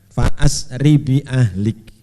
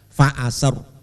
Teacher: Kalau diteruskan fa'asri bi ahlik, ya tipis. Tapi kalau diwakafkan fa'asr, main bibir.